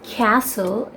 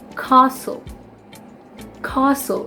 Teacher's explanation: So the A is extended, it's prolonged.